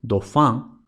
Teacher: una L implosiva, es decir, una L al final de la sílaba, en francés casi siempre se convierte en u